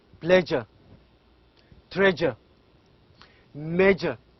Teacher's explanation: s we pronounce it as j pleasure treasure major so this this sound is a voiced sound and also it is a palatal sound